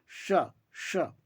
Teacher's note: आपका जो जीवा है वो तालु के स्थान पर टच होना चाहिए तालवे सकार को उच्चारण करते समय। तो यहाँ पर अलग अलग से मूर्धा, तालु, दंता ऐसे बोलने की आवश्यकता नहीं है।